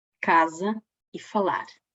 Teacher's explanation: A, em posição tónica, é pronunciado aberta, como em casa e falar.